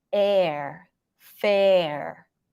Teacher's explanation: we have the as in red e and then you want to lift the tongue up for the r air fair or or around your lips a little bit at